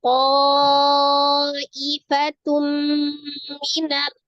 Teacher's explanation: Fatum, di situ ada huruf tak marbutoh berharokat dhamma tanwin ketemu dengan huruf mim. Berarti tanwin bertemu dengan huruf mim, hukumnya adalah idgham bi gunnah, ditasdidkan ke huruf mim disertai dengan gunnah yang paling sempurna